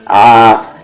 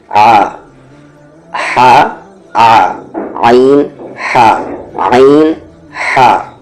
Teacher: جو ہا کا مخرج ہے اس والے ہا کا وہی مخرج اس عین کا بھی ہے، یعنی کہ مڈل تھروٹ